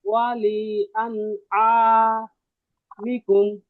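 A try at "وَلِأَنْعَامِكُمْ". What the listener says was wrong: হ্যাঁ, হামজা আর আইনের পার্থক্য আরেকটু করতে হবে একটু। হ্যাঁ, ওয়ালি আন আ, আ একটু শক্তি দিয়ে, ওয়ালি আন আমি, মানে মানে পুরো বাড়ির সবাই আপনাদের তাকায় থাকবে, এই কি হয়েছে, মানে আইনার হার উচ্চারণ এমনই, হ্যাঁ হ্যাঁ, কি রে এটা কি হইলো, এরকম মানে তাকায় থাকবে, কি রে কি হইলো, বুঝছেন, এরকম।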